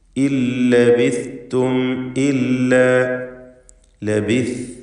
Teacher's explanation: നാവിൻ്റെ അറ്റത്തിൻ്റെ മുകളും മേൽ മുൻപല്ലിൻ്റെ അറ്റവും, ഇതാണ് സാഇൻ്റെ മഖ്റജ്. ഇല്ലബിസ്തും, അത് സീന് പോലെ ആയി പോകരുത്.